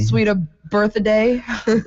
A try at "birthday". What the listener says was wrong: Birthday. She just added an extra syllable in there.